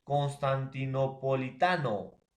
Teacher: esa ta que está sobresaliendo, que tiene mayor energía de articulación, que tiene más tensión, mayor sonoridad, le vamos a llamar sílaba tónica.